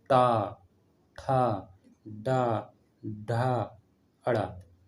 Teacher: जैसे टा वर्ग जो है ये मूर्धा से निकल रहा है।